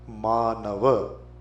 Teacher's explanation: the first sound is a long one ma second is short n third is also short V